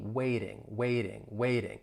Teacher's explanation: that T is a flat T. It's going to sound like a soft D.